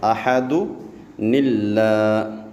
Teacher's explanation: احد اور اللہ کے درمیان میں چھوٹا سا نون لے کے آ جائیں گے